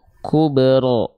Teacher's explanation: huruf ro ini ketika dia berharakat fathah itu harus dibaca dengan pelafalan yang karakternya tebal